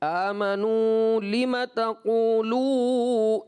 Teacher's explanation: جو واو مدہ ہے اس کو آپ نے تھوڑا زیادہ دراز کر لیا · لذین میں آپ نے ایک الف کیا، پھر آمنو میں آپ نے بڑھا دیا. آمنو لم تقولوا، اس طرح کرنے سے نا مساوات نہیں رہتی.